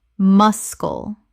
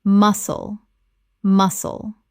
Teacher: The C is completely silent. Two syllables.